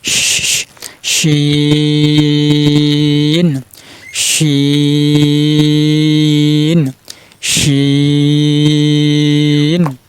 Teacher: আবার শিনের উপরে 3 নক্তা, শিন। জিহ্বার মধ্যখান তার উপরে তালুর সাথে লাগিয়ে উচ্চারণ করেন